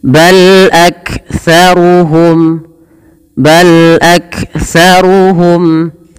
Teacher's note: dibaca dengan bacaan izhar syafawi jelas suara mimnya